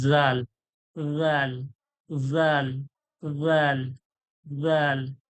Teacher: আর এইটা যখন আমি জাল বলবো, জিভের আগালটা যখন সামনে দাঁতের ধারালো অংশ অর্থাৎ আগালে লাগাবো, দাঁতের উপরে লাগাবো, তখন এই উচ্চারণটা হবে জাল, জাল, জাল, জাল, জাল।